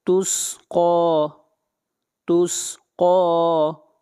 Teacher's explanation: اگلی آیت، تسقی، تسقی، قاف کو کھینچ کر پڑھیں گے، قاف کے اوپر کھڑی زبر ہے اور قاف حروف استعلاء میں سے، اس لیے قاف کو موٹا پڑا جائے گا